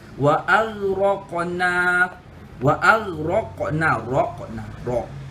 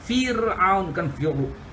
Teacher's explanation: ra pada kalimah ini disebut dengan tebal dan bukan disebut dengan tipis. Ini disebut dengan tafkhim.